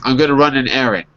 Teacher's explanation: If you say it fast, you don't hear the D at the end.